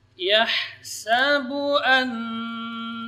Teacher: huruf ha yang keluar dari tengah-tengah tenggorokan